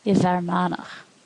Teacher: In a slender context, it's pronounced as V